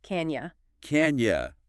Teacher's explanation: The vowel sound in you gets reduced to a weaker ya sound.